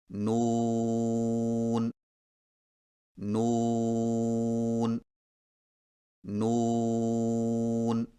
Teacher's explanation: نون کی ادائیگی میں زبان کے باریک کنارے کو اوپر والے دانتوں کے مسوڑوں سے لگا کر ہونٹوں کو چونچ کی مانند گول کرتے ہوئے باریک آواز میں پڑھیں، یعنی نون نون نون۔